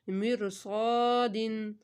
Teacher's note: الف سے پہلے حرف مستعلیہ تو صاد کو موٹا